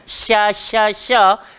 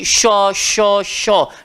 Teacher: kalau kita muncung, nanti dia akan bawa bunyi tebal sikit